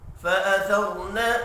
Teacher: فأثر را ساکن سے پچھلے حرف کے اوپر زبر ہے، را کو پر پڑھیں گے